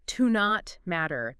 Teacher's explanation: you might hear it almost like one word, like to not matter. The T in not kind of blends into the M.